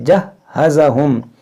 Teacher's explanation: یہ ہا مشدد ہے، تو اس کو 2 بار پڑھیں گے